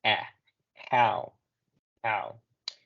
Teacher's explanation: Es muy parecido al sonido de la A que hacemos en español, pero es un poco más abierta. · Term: sonido de A